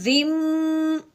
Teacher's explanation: اچھا، اب یہ دیکھیں کہ میں نے منہ بند کر کے یہاں پہ جو غنہ کیا ہے زم، جو منہ بند کیا ہے یہ ہے غنہ. منہ بند کرنے کے بعد ناک میں سے آواز نکالی، اس کو کہتے ہیں غنہ. ہاں جی، میں نے غنہ کیا کیوں ہے کہ یہ آپ نے بات ذہن میں رکھنی ہے کہ جو میم ساکن ہوتا ہے نا، جیسے یہ میم کے اوپر جیسا ہماری میم ساکن ہو گیا، میم ساکن کے بعد جب بھی با آ جائے تو میم ساکن پہ غنہ کرتے ہیں.